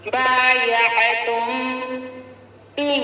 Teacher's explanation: یہاں پر ایک الف کی مقدار میم ساکین کی آواز کو چھپا کر پڑھیں گے. با کو جلد پڑھیں گے. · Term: اخفاء شفوی